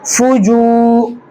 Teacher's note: واو مدہ ہوگا. اس کو ایک الف کے برابر کھینچ کر پڑھیں گے